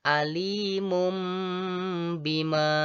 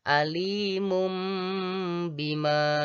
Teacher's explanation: Jadi bunyi tanwin pada kata alimun ditukar menjadi m atau sehingga menjadi alimum.